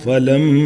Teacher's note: میم کے اوپر تشدید ہے تو میم گننا کر کے پھر ایک الف تک، کیونکہ یہ مد اصلی ہے الف بیفور فتحہ، الف سے پہلے زبر ہے تو اس لیے جو ہے آپ نے ایک الف تک کھینچنا بھی ہے.